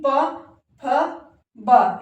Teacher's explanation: ओष् के अंतर्गत पै वर्ग के जितने भी व्यंजन है प फ ब भ म ये सभी जो हमारे प वर्ग के अंतर्गत आते हैं और जब हम इनका उच्चारण जो है ओष्ठ ओष्ठ मतलब होठों की सहायता से जो है हम इनका उच्चारण कर पाते हैं जैसे कि प फ ब यानी ऊपर और नीचे का होठ जो आपस में मिलते हैं एक दूसरे से तभी हम इसका जो है उच्चारण कर पाते है यानी ओष्ठव से जो है हम इसका जो है उच्चारण जो है कर पाते हैं।